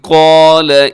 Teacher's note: قال اس میں حرف قاف موٹا ہے، ساتھ الف بھی موٹا ہے